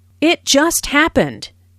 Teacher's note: Notice the stress on just, which emphasizes that the accident happened very, very recently.